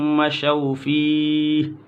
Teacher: رکیں گے تو مشوا فيه ہا کو ساکن کریں گے